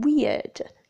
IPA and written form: wɪəd (weird)